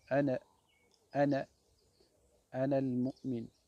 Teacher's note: Il y a un alif à la fin, mais on ne prononce jamais le alif de ana. En arabe, on ne le prononce jamais.